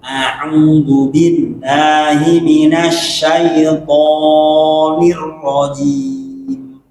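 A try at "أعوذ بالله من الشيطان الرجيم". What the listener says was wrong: Tonya kepanjangan tuh. Tonir rajim. 2 harokat. A'udzu billahi minasy syaithanir rajim.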